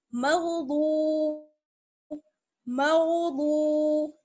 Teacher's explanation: بود بھی موٹا پڑا جائے گا اور واو سے ملائیں گے تھوڑا سا کھینچ لیں گے تھوڑا سا ایک الف کے برابر یا 2 حرکات کے برابر کیونکہ واو مدہ ہے